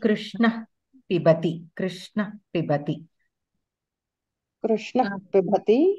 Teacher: when visarga is followed by pakara, since pa is pa varga aksharas are oshta, the swarasthanam is in the oshta. So, pha, like how when we say pha, how the sound comes, the visarga also we have to pronounce like that.